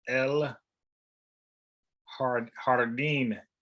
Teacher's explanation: for garden, el jardín, the J is an H sounding